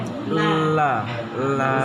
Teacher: lam itu lebih condong ke tepi ujung lidah. Jadi kalau ini lidah, ini ujungnya, berarti dia tepi ujung lidah. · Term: inhiraf